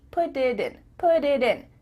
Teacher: your tongue is just tapping the top of your mouth to make a D.